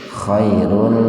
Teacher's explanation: mad lainnya dibaca sepintas saja, tidak sampai 2 ketukan, dan diidghamkan ke huruf lam. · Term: idgham bila guna